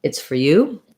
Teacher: the or gets reduced to er